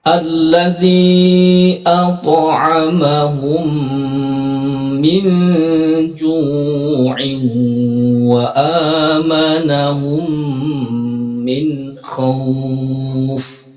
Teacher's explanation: Jadi di bagian-bagian idgham mim ini kita harus tahan dan disatukan disertai dengan berdengung.